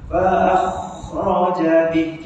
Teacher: masa kita sebut ah tu ada bunyi berdengkur sikit ya. Tak bunyi putus, dia bunyi sambung.